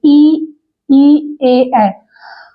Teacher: जिन स्वरों के उच्चारण में जीभ का अग्र मतलब आगे का भाग काम करता है उसे हम अग्र स्वर कहते हैं। इसमें ई, ए आते हैं, आप बोल के भी देख सकते हैं, ई, ए, अग्र स्वर बोलते हैं।